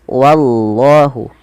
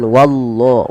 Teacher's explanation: usahakan jangan menebalkan wa, tapi dia wa-nya tipis. Wallahu, bukan wallah, bukan, tapi wallahu.